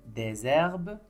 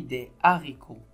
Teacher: sur le mot herbe j'ai mis la liaison j'ai dit des herbes mais dans le mot haricots j'ai mis des haricots